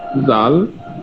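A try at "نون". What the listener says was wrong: নুন নুন, এটা জাল না, এটা মিলানো দেখেন।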